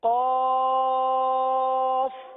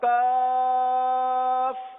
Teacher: قاف زبان کی جڑ اور تالو کے نرم حصے سے ادا ہوتا ہے، اور کاف زبان کی جڑ اور تالو کے سخت حصے سے ادا ہوتا ہے